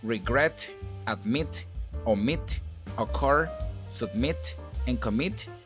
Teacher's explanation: the stress goes in the last syllable